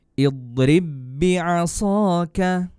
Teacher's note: ba-nya juga termasuk huruf qalqalah tapi tidak boleh dipantulkan kalau dia idgham mutamatsilain. Berlaku hukum idgham mutamatsilain yang artinya huruf ba sukun atau ba mati bertemu dengan huruf ba juga tapi hidup, maka dileburkan.